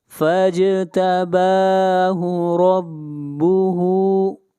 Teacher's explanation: را کو موٹا پڑھیں گے، را کے اوپر زبر ہے، اور ہا کو کھینچ کر پڑھیں گے، ہا کے اوپر الٹا پیش ہے۔